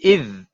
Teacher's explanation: huruf zal ini huruf mati, tapi tetap juga kita kena keluarkan lidah